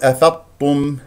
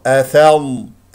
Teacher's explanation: الضاد هنا ساكنه رخوه فيها استطاله فيها تفخيم مرتبه رابعه مرتبه الساكن اعطيها حقها اجري فيها الصوت كيف افظ تدرب افظ